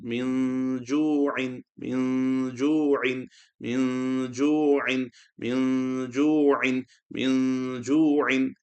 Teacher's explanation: the noon sakin will be read with light nasal sound. So min will become min. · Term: ikhfa